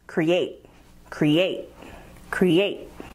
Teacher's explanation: It has two syllables, create, with the emphasis on the second syllable